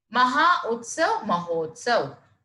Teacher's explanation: यानी यहाँ पे आ और ऊ के मिलन से ओ में परिवर्तित हो जाता है।